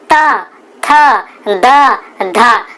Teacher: बोल के देखिए आपकी जीभ जो होगी वो दांत पर टकराएगी। दांत पर बिना टकराए आप बोल नहीं सकते इनको, इसलिए इनको दंते कहा जाता है।